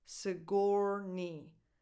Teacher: The stress goes on the second syllable, on: So the first vowel is a schwa.